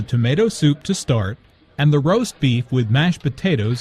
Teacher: tomato soup, roast beef, and mashed potatoes are compound words. The stress falls on the second word in each phrase.